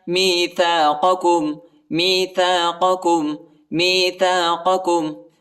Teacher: پہلے والا قاف جو ہے یہ بڑا قاف ہے اور دوسرے والا کاف جو ہے چھوٹا کاف ہے، ہلکا پڑھیں گے، ٹھیک ہے، موٹا نہیں پڑھیں گے۔